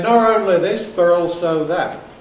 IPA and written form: ˈnɒr oʊnli ˈðɪs bər ˈɔːlsoʊ ˈðat (not only this but also that)